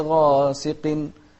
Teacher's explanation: احنا قلنا ان احرف التفخيم خص ضغط قض، فالغين من احرف التفخيم، وهني مفتوحة وبعدها ألف